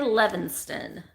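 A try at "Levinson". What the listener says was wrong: There's no T in it.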